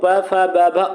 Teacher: प फ ब भ ओष्ठ वर्ण होते हैं